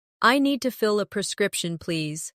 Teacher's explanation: Stress prescription, so it's clear.